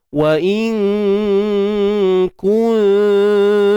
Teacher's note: nun mati jumpa kaf ikhfa hakiki, sembunyikan nun di sisi kaf dan dengung nipis